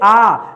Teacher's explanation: आ कहां आता है दोस्तों, ये पश्च स्वर में आता है, ठीक है। आप बोल के देखिए आ, तो आवाज अंदर की तरफ से आएगी, जब आवाज आगे की तरफ से आए तब जवाब आपका अलग हो जाएगा, ठीक है।